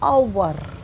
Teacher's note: इसकी प्रोनाउंस ह से ना होते हुए अ से होती है